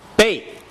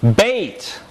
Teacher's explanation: the tongue is not being raised nor is it being lowered it stays in this Central plane it's a mid front vowel the lips are unrounded